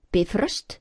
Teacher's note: the accent is always on the first syllable in Icelandic. Bifröst, not bifrost at all, but bifröst.